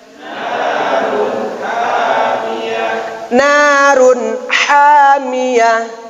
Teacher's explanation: Praktek ha itu keluar dari tengah tenggorok